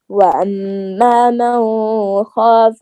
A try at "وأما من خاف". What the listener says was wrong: من کا غنہ نہیں ہے، اما من کے آگے حروف حلقی آگے ہے نا، تو یہاں غنہ نہیں ہوگا، اظہار ہے.